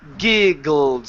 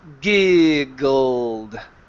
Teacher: So, you should feel a vibration the whole time. It should not stop.